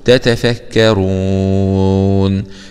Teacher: نقف عليها مد عارض للسكون